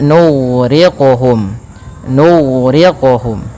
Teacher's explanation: hati-hati jangan sampai huruf gainnya terpantulkan